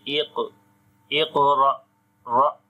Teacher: on the qaf also we make qalqala, and this is weak qalqala. Here we do not say strong qalqala or strongest, only we say weak qalqala, as the qalqala letter is coming in the middle of the word.